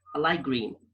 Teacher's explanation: So the T is transformed into K.